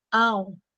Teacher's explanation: gabarito mineração é a palavra que possui um ditongo decrescente nasal decrescente porque primeiro começou pelo som mais forte a vogal depois a semi vogal